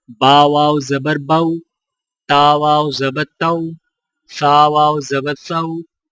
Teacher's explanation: اور واو لین میں ہونٹوں کو اوپر کی طرف کھولنے کے فوراً بعد گول کرتے ہوئے نرمی سے بغیر کھینچے پڑھیں